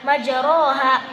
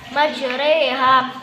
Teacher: Imalah, memiringkan fathah ke kasrah atau memiringkan alif ke arah ya.